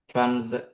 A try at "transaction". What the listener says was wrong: The letter Z, okay? Not letter S. Go on.